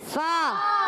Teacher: فا ادا ہوتا ہے اوپر والے دانتوں کے کنارے، نیچے والے ہونٹ کے جب تر حصے سے ٹکراتے ہیں تو ادا ہوتا ہے فا۔